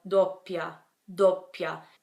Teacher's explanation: So because of that, you do have to make a pause before the second half of the word. So you would make a pause just between the O and the first P. So doppia, doppia. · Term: double consonant